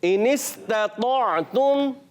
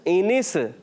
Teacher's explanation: सीन की अदायगी clear रखनी है, सीन में कलकला नहीं करना